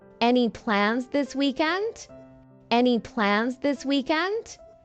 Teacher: rising intonation to show it's a question